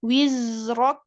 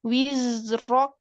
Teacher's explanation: Zai sukun ini sifatnya rokhwah, maka tetap dialirkan seperti shin dan ha tadi.